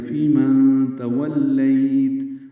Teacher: فی ماں تولیت، واو کو لام سے ملائیں گے، لیت یا لین مدہ، لین عارض السکون لمبا کریں گے